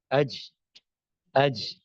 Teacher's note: مثال کے طور پہ اس کے مد مقابل آپ مثلا دیکھیے جیم ہے، اج، اج، فوراً جو ہے وہ آپ، یعنی جیم کے اوپر سکون کے ساتھ آپ سانس کو جاری نہیں رکھ سکتے